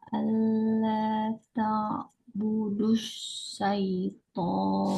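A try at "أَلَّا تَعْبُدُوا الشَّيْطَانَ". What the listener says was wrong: Syai, budusya. Budusya. Lebih lebih tafasyi, nyebar angin. Budusya. Nah, budusya. Oke, alla ta'budus syaiton. Sya Indonesia. Sya. Sya, sya. ya, sya bukan syai, sya. Sya.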